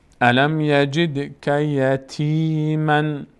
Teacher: تنوین بعدش فی آمده مخفا میشه، یعنی از بینی ادا میشه